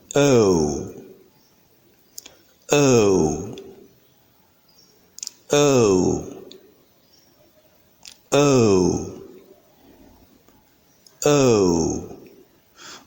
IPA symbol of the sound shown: əʊ